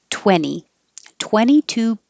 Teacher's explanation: you don't have to say the t in 20 just skip it